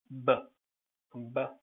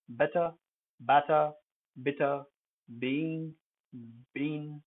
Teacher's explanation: B involves both lips. They part when you speak it. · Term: bilabial voice